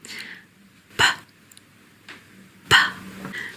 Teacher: You're probably noticing there is a sort of pop as the air is released as you say the sound. It's a bit like a small explosion.